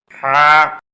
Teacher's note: এ হরফটি 1 আলিফ পরিমাণ লম্বা হবে, কণ্ঠনালীর মাঝখান থেকে গরম বাতাসের সাহায্যে উচ্চারিত হবে, বাংলা আকার প্রকাশ পাবে।